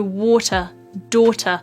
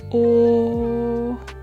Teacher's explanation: them oh the way that I'm making this sound is essentially my lips are quite closed and round but the back of my mouth is still quite relaxed or and there's a slight curling and lifting of my tongue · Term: curled round o sound